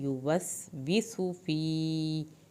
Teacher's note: या साकिन को खींचे, सीन के पेश को लंबा नहीं करना।